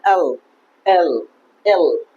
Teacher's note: উপরের দাত বা উপরে তাল এবং জিহ্বা টাচ হবে তারপর হবে এল